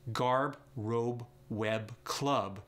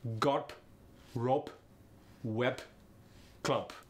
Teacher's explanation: the b goes to p in the medial and final positions of words for instance garb robe web club become garp rope wep club